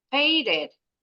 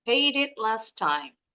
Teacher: The word paid ends with the D consonant, so we connect the D to the next vowel I and the word it.